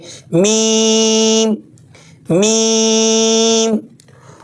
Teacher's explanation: دونوں ہونٹ بند کر کے ناک کی ہلکی آواز کے ساتھ پڑھیں گے